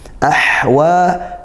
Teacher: tempatkan makhrajnya di tengah tenggorokan, ahwa dan desis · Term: hak sukun